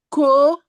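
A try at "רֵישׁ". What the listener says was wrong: Non, non, non, c'est un ret. Ret, ret, ret. Le ret se prononce comme un R.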